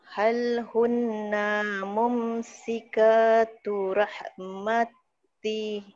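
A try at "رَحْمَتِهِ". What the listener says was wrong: Rahmatih. Gitu. Ada hanya jadi bunyi.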